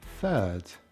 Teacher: You notice I'm using an F at the beginning. Now, this starts with an F, so why not end with an F? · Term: TH fronting